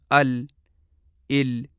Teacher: کہ جہاں اوپر والے جبڑے میں زرد رنگ نظر آ رہا ہے تو زبان کا دائیں اور بائیں دونوں طرف سے تھوڑا سا کنارہ جہاں زبان کا ابتدائی اوپر والا حصہ ختم ہوتا ہے جب اپنے بالمقابل اوپر کے جبڑے یعنی تالو سے ٹکرائے گا تو وہاں سے لام ادا ہوگی